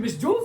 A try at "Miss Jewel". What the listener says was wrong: It's Miss Jewel. There's no S.